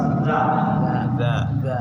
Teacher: lidahnya ada di belakang gigi atas